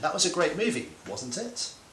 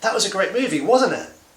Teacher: i don't know what your opinion is so i'm using falling intonation